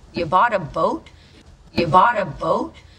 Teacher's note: Notice how her intonation rises at the end.